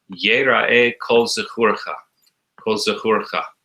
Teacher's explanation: you don't really accentuate the word kol. It just runs into the next word as if it was all one word.